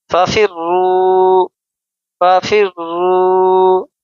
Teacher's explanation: را مشددہ ہے، یعنی را کے اوپر تشدید ہے، اس کو ہم زور دے کر سختی کے ساتھ ہم ادا کریں گے